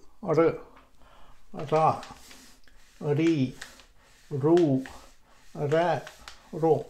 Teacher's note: we make one stroke on the hard palate